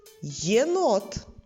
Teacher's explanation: перша літера є на початку слова дає нам два звуки йе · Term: звукосполучення й е